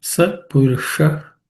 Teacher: the sh is cerebral sh